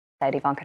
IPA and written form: ɪˈvɑːŋkə (Ivanka)